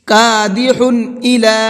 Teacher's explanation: تنوین کے بعد میں اگر حمزہ ہوتا ہے تو چونکہ حمزہ اظہار کے حرفوں میں سے ہے، اس لیے تنوین کے اندر اظہار کر کے پڑھتے ہیں، صاف صاف پڑھتے ہیں، غنہ اخفا کچھ بھی نہیں کرتے ہیں